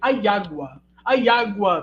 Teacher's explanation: no português europeu do Norte ele fazem um ditongo então aágua para eliminar o iato